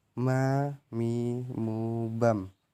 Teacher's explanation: melafalkan huruf mim dengan cara merapatkan bibir kita